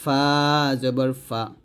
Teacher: ফা উপরে দুই দাঁত নিচে ঠোঁটের সাথে লাগবে